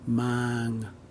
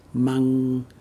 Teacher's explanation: With mang, we hold the ah sound longer, mang. But with mang, we move quickly to the ng sound · Mang, to bring something, is pronounced with an open and long ah sound. But mang, bamboo shoot, has a much shorter ah sound. Think of it as the amount of time it takes to move on to the next letter in the word.